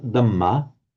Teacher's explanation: the Burmese will pronounce it with the d, but without the aspiration